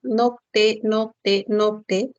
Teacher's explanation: cuando dices nocte la lengua va de la parte posterior noc y luego se dirige hacia delante